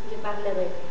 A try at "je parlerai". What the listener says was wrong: Très bien.